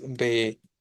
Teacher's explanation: No es ve-ne-re-a, sino re-a específicamente. La sílaba tónica la identificamos, es el ne, y por lo tanto sabemos que es esdrújula.